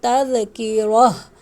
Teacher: یہاں ہا ساکن ہو جائے گا جب ہم وقف کریں گے